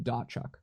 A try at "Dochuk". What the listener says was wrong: That is incorrect. So the T is silent, so it's Dochuk. It's not Dotchuk.